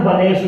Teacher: इस सा के पहले ए आया है तो मूर्धन्य सा हुआ